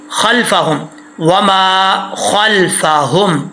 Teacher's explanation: اس ہا کا تعلق سینے سے ہے تو اس کو موٹا پڑھیں گے